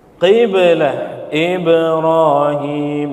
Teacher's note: ketika sukun maka dibaca Qalqalah ada pantulan